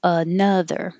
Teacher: the vowel is uh not ah like otters